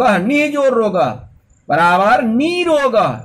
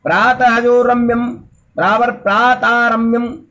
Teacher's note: यदि विसर्ग के बाद र आए तो विसर्ग का पहला वाला स्वर दीर्घ हो जाता है तथा विसर्ग का लोप हो जाता है